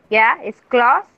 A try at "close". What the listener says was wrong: Close. Yeah, without the D, without the T sound at the end. Close.